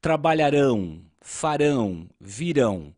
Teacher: Perceba também que aqui as palavras são oxítonas, ou seja, a sílaba tônica é a última.